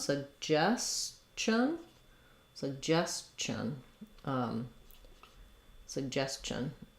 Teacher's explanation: in this case, the TI says the ch sound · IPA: /tʃ/